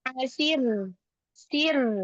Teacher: Nah, ro-nya disukunkan. Nah, ada ro sukun sebelumnya kasroh, maka dibaca tipis